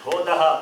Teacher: Bo is alpa prana. Dha is mahaprana.